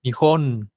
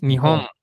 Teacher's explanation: la o se dice con saltando el aire en la nariz cuando yo tengo una palabra que termine en N la vocal de antes se va a decir nasalizada una vocal nasalizada quiere decir que el aire va a salir